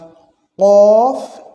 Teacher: দুই নুক্তা হলো আর জিহ্বার গোড়া থেকে একটু আগে বাড়িয়ে অর্থাৎ জিহ্বার গোড়ার একটু আগের অংশটা থেকে ঠিক তার বরাবর উপরে তালুর সঙ্গে লেগে উচ্চারণ হবে কাফ